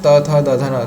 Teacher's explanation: संपूर्ण त वर्ग यह दंत से उच्चरित होता है।